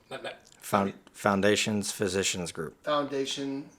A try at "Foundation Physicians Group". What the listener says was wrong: Foundation Physicians Group. Foundation Physicians Group.